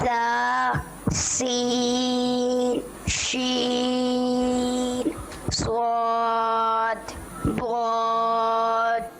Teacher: زا کی انہوں نے ادائیگی بہت اچھی کی, یعنی وہی سیٹی والی